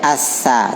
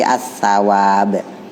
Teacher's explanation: Sa yang digigit. Bukan sya tapi sa gigit.